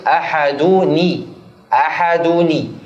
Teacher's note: Kalau dua huruf sukun bertemu maka dikasrahkanlah harokat di huruf yang sebelumnya. نكسر النون الساكنة. النون الساكنة نكسرها ثم نقول أحدوني.